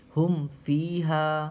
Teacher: میم ساکن کے بعد فا رہا ہے تو یہاں پہ غنہ اخفا کچھ نہیں ہوگا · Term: اظہار شفوی